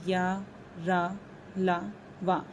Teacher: ये सभी अल्पप्राण हैं। जैसे बोलने में भी इनमें ज्यादा वायु नहीं लग रही है।